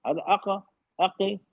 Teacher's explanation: जबान का आखिरी हिस्सा और नरम तालु का पूरा कांटेक्ट होना चाहिए पहले, फिर छोड़ेंगी। अक अक तो आवाज, अदरवाइज आवाज क्या होगी, धीमी हो जाएगी। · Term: कलकला